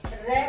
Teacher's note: जब र बोलते हैं जब जीवा में कंपन ज्यादा होता है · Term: परकंपी वर्ण